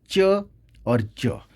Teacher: consisting plosive follow by fricative with the same place of articulation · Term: एफ्रीकेट